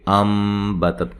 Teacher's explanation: تا کو ہلانا نہیں ہے، حروف قلقلہ کے سوا باقی کوئی بھی حرف ساکن ہو اس کو ہلا کے نہیں پڑھتے